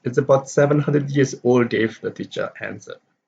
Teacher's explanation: the teacher answered does not receive a stress